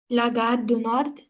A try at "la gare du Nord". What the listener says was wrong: Je dis qu'on ne prononce pas la consonne finale. La gare du Nord. La gare du Nord.